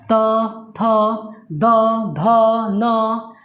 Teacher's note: जीभ जाकर दांत पे स्पर्श कर रही है, यानी छू रही है, इसलिए इसको दंतव्य व्यंजन भी बोलते हैं। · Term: दंत व्यंजन